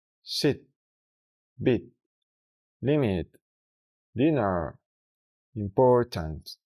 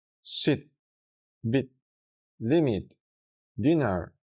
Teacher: se reproduce como una i rápida y floja del español. Para representarla también en español, muchas veces se escribe como IH, porque la H muestra que el sonido se corta y no es tan cerrado.